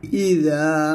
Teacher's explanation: জিহ্বার আগা সামনের উপরের দুই দাঁতের আগার সঙ্গে লাগিয়ে জালটা পাতলা করে উচ্চারণ করবেন